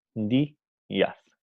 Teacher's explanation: Como la deslizada I lleva acento, entonces ya no es una deslizada, sino se ha convertido también en una vocal plena, ¿no? Y no forman un diptongo.